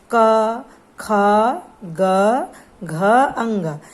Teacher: हमारे कंठ से निकल रहे हैं सीधे। तो इसमें हमारा सिर्फ कंठ से प्राणवायु निकल रहा है, तो इसे हम कंठस्थ व्यंजन कहते हैं